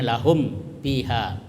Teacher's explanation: terang itu mimnya dan berada di bibir dan mulut tertutup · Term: izhar syafawi